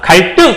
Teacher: 한자어 리을 받침 뒤에 예사 소리가 오게 되면 예사 소리가 된 소리가 된다라고 설명할 수 있습니다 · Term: 된 소리 되기